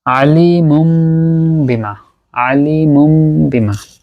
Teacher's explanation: তাহলে তানবিনটা হয়ে গেল মিম গুন্নার সাথে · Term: একলাব